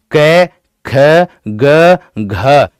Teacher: आप इन वर्णों का उच्चारण यहां पर हाथ रख के करके देखिएगा कि जिन वर्णों का उच्चारण करते समय जीभ का, ठीक है, जीभ, हमारे जीभ का पिछला हिस्सा हमारे कंठ को स्पर्श करता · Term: कंठीय व्यंजन